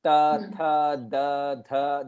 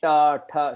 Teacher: The tongue, it touches the teeth. Right? Whereas in the line ta, tha, da, your tongue touches the top of your palate.